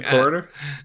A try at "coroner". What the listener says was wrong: coroner. You put the emphasis on the wrong syllable.